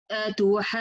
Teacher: we didn't make any nabr in the noon shadda here, but in the jim shadda we make nabr, because noon shadda, it has ghunna, the longest ghunna in the Quran, and it's enough to show me there is 2 letters, it's not 1 letter.